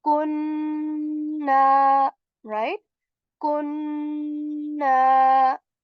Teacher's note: So we stay for a bit on noon sound and made a nasal sound, and this is called gunna.